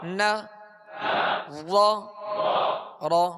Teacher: را پر زبر ہے اس لیے را کو پر پڑھیں گے، را پر زبر پیش، دو زبر دو پیش ہوں تو را کو پر پڑھیں گے، اور را کے نیچے زیر یا دو زیر ہوں تو باریک پڑھیں گے۔